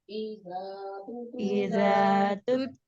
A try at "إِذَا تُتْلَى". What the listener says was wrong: दाल की अदायगी को दुरुस्त रखिएगा, ता के ऊपर आपने कलकला नहीं करना है।